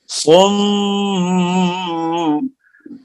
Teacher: صم میم مشدد کا غنہ ہوگا